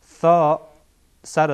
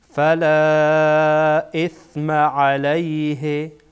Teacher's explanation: ثا سر زبان برخورد میکنه به سر دندانهای بالایی که در پیشین قرار داره